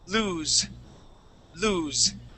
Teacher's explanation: it sounds like a z it's voiced